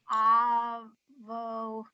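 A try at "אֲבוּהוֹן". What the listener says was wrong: Not vo. No. Dots in the middle. Vu. Avu.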